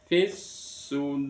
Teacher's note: alif lam yang bertemu dengan shad maka alif lamnya tidak terbaca dimasukkan ke dalam huruf shad ditandai dengan tasdid kalau di dalam Al-Qur'an. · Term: idgham syamsih